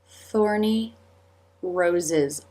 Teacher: Teeth together for the z sound. Then part slightly for the schwah and together again for the final z sound.